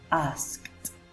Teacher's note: So k is voiceless. That's why we are going to pronounce asked. This ed pronunciation is t. It is not asked, but it's asked.